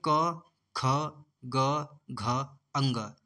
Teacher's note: क वर्ग में क, ख, ग, घ, अंग। तो ये होगा दोस्तों कंठ वर्ग